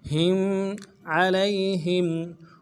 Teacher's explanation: لام کو یا کے ساتھ ملانا ہے، یا لین ہے بغیر کھینچے پڑھیں گے ، ہا کو میم کے ساتھ ملانا ہے، میم ساکن غنہ